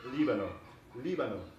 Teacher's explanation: Lebanon in Spanish has the accent on the first syllable